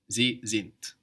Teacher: Sind is spelled S-I-N-D. So we have the S pronounced like a Z there, and the D on the end of the syllable pronounced like a T